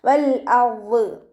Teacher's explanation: നാവിൻ്റെ മുഴുവൻ ഭാഗങ്ങളും മുകളിലേക്ക് ഉയർത്തിയിട്ട് തഫ്ഹീം ചെയ്യുക